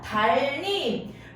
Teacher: 나머지 니은은요, 바로 리을로 니은이 바뀝니다. 유음이 아닌 자음이 유음의 영향을 받아서 유음, 리을로 동화되는 현상이다. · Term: 유음화